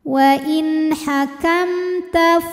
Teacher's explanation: karena ada mim sukun yang menghadapi huruf selain mim dan ba yaitu huruf Ta Maka Mim ini kita bunyikan dengan jelas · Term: izhar syafawi